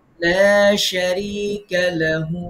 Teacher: তাহলে লাহুতে আমরা এক আলিফ মাদ দিব